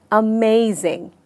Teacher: सही उच्चारण इस शब्द का है अमेजिंग, यानी मैंने मे पे जोर दिया। So the stress is on मे।